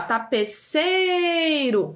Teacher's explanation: O E tem um som mais alto em relação ao I. Então, por isso, o E vai ser vogal e o I semivogal